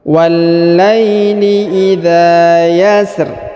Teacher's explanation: ini ro-nya ditipiskan ya, ro-nya dibaca tipis. Wallaili, huruf wa langsung sambung ke alif lam qamariyah ini yang berharokat tasdid, kita perhatikan.